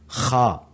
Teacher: خا یہ بھی حلق کا ہی حصہ ہے لیکن یہ تھوڑا سا اوپر والا حصہ ہے